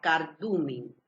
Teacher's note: Vamos a mirar dónde hago la fuerza, cardumen. Hago la fuerza en du. Entonces esta es la penúltima sílaba. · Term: palabra grave